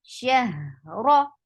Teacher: Ra is heavy. Whenever Ra is with Fatha or Dhamma, it is always heavy. Ra, the sound should be RAW grammatically.